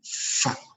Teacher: disertai dengan hams atau angin atau nafas gitu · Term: huruf fa